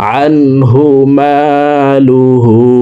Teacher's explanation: মিম আলিফ জবর মা, লাম পেশলু, হা উল্টা পেশ হু, হার উপরে উল্টা পেশ আছে, তাই ঠোঁট গোল করে এই হাকে 1 আলিফ টানে পড়ব।